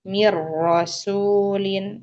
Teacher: langsung mati huruf nunnya karena dia sudah idgham ke huruf ra